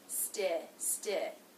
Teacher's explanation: It begins with the ST consonant cluster, opens into the I as in sit vowel